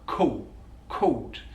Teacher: he uses the vocalization of the dark l